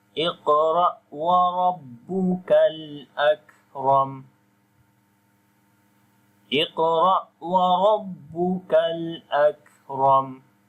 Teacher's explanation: Ak, ram, and ra we read also in heavy sound due to fatha sign on it